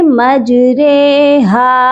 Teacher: اب آپ دیکھیے یہ مجریہا لکھا ہوا ہے، اور 80% لوگ اس کو یہی پڑھتے ہیں، لیکن ہم نے اس کو مجریہا نہیں پڑھنا۔ ہم نے یہاں پر را کھڑی زیر ری کی جو آواز ہے، اس کو ہم نے مجہول کر کے پڑھنا ہے۔ ہم نے اس کو پڑھنا ہے مجریہا، یعنی کہ را کے ساتھ بڑی یہ کو پڑھنا ہے۔ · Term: امالہ